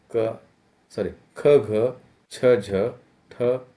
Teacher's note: यह अल्प प्राण व्यंजनों के विपरीत है। महाप्राण व्यंजनों के उच्चारण के मुख से वायु ज्यादा मात्रा में निकलती है, यानी कि इसके उच्चारण में श्वास बल अधिक होता है, या यूं कहे कि हवा का अधिक्य होता है।